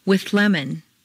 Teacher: to form a composite sound in the following example see how the th moves back and the L moves forward to meet in a new middle position